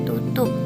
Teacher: Afek merupakan artikulator aktif, sedangkan volum merupakan artikulator pasif. Apikal alveolum merupakan hambat tak bersuara t